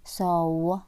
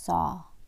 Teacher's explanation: وركزوا هنا في saw أو law ما في صوت و